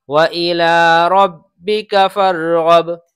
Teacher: اس کاف کو کھینچ کر پڑھ دیتے ہیں بچے، تو کاف کو ذرا بھی نہیں کھینچنا ہے، بغیر کھینچے پڑھیں گے وَإِلَىٰ رَبِّكَ فَارْغَب۔